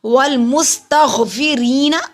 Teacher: سین پہ سٹی کی آواز آئے گی، غین حلق کے اوپر والے حصے سے ادا ہوگا۔ فا کو ادا کرنے کے لیے اوپر والے سامنے دانتوں کو ہونٹوں کے درمیان میں لگائیے۔